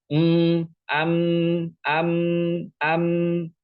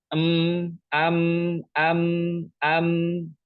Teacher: ketika melafalkan mim sukun, maka dua bibir kita itu rapat.